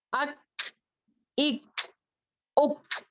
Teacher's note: When we touch the root of the tongue on the hard palate, then we make kaf letter sound.